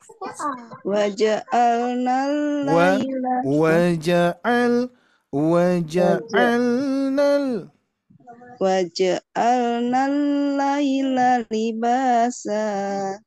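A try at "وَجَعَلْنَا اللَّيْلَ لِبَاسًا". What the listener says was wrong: Masih ke irama 2. Ke irama 2. Irama 3. Wa ja'alnal laila libasa. Sa. Masih di sini. Sa.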